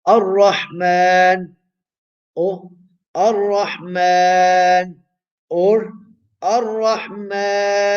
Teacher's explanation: It is permissible to do qasr, the length of 2 vowels, or tawassut, the length of 4 vowels, or even ishba, 6 vowels. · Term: al-maddul aridi sukun